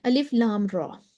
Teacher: الف ہم نے بتایا صرف اس میں سبب موجود ہے، لام پہلے بھی ڈسکس ہو گیا، 3 حرفی ہے، محل الف مدہ ہے اس کا، لام اور میم کے اوپر جو ہے وہ سکون ہے، تو مد لازم حرفی مخفف بن گئی، اور طول کریں گے 6 کاؤنٹس